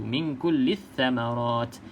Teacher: pastikan lam jangan sebut sebab dia kosong, lam kosong, jangan kita sebut. Terus saja masuk dalam huruf yang bersabdu.